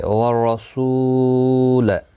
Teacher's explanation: والرسول، رو زبر کی وجہ سے پر ہوگا سو، واو مدہ ہے، ایک الف کی مقدار کے برابر کھینچ کر پڑھیں گے، اور وقف کی صورت میں لام ساکن پڑھا جائے گا، ملانے کی صورت میں اپنی حرکت کے ساتھ پڑھا جائے گا۔